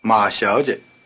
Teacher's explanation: The first syllable is 小 the second is 接 The tones are rising neutral with the weak, short neutral tone in a medium pitch.